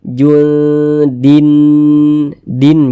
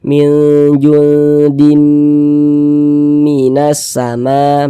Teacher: bunyi tanwinnya ini dimasukkan ke huruf mim melebur ke huruf mim kita baca junim Dim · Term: idgham bhunah